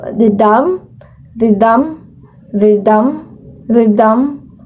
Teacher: more stress on the second of two syllables